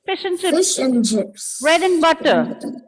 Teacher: I just don't have to say the entire A and D. I can just stop it with N.